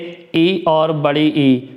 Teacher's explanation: आगे बात करें तालु से उच्चारित होने वाले तो तालु से ई और बड़ी ई